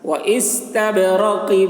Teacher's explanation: با میں قلقلہ، یعنی با کی آواز ٹکرا رہی ہے